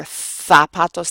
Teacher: In Spain, again, you will hear zapatos, the TH sound, but it's never pronounced Z. It's always S or Th.